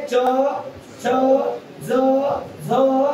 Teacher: आपल्या जिभेचा टोक वरच्या दाताच्या वरच्या बाजूला म्हणजेच काय कठोर तालूला जाऊन भिडतो आणि मग ते वर्ण उच्चारले जातात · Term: तालव्य वर्ण